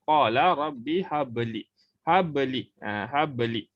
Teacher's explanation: Dia ada bunyi lantunan dan seolah-olah lantunan tu berbaris atas. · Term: qalqalah